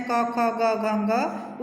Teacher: क वर्ग में स्पर्श व्यंजन है क, ख, ग, घ, ङ। उच्चारण स्थान है कंठ